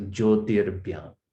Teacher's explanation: So it becomes Jyotir Byam. Okay, when it's followed by a soft consonant, you're going to add the refa, the rakara